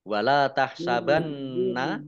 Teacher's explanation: nunnya dibaca mendengung nun tasdid, dibaca runah atau mendengung ditahan 2 harokat